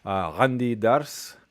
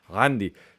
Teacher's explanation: The vowel gets lowered because you have pharyngalization.